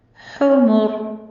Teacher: याद रखिएगा रा के ऊपर भी जब जमा होती है तो भी रा पुर पड़ी जाती है, और जब हम रा को साकिन कर रहे हैं उससे पहले जमा है तो भी ये रा पुर ही पड़ी जाएगी। इसे राय मुफख्खम कहते हैं।